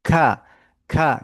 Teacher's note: K disertai dengan aliran nafas. Nafas yang mengalir. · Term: huruf kaf